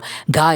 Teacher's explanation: ഈ മാറ്റം സംഭവിക്കുന്നത് വായിൽ കൂടി തന്നെ ഉച്ചരിക്കുമ്പോൾ അത് ശുദ്ധമായിട്ട് അനുനാസികം അല്ലാതിരിക്കുന്നു ഇപ്പോൾ ഗ എന്ന് പറയുമ്പോൾ അത് അനുനാസികമല്ല അപ്പോൾ അത് അതിന്റെ ശ്വാസം നമ്മൾ വായിലൂടെ തന്നെ പുറത്തേക്ക് വിടുന്ന ഒരു അവസ്ഥയാണ് ഉള്ളത്